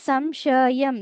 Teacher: సం పక్కన ష వస్తుంది కాబట్టి సం అంటున్నాం సన్ కాదు